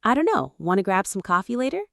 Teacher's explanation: Quick on the small words. a little stress on coffee and later.